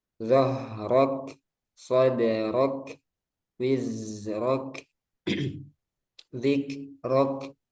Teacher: setiap kaf yang sukun kita jelaskan hamnya. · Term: hamusnya